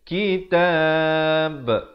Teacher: Dan bila kita berikan tanda mati mendatang pada huruf ba, kerana ba merupakan huruf qalqalah, dia kena berikan pantulan. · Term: qalqalah kubra